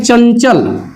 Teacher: इसका उच्चारण करते समय प्राणवायु नाक से ही बाहर आती है